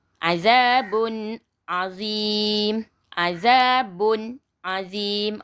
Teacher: Ba berbaris dua di depan bertemu dengan huruf ain. Jadi kena baca jelas, nyata, terang. Tak perlu, tak boleh dengung.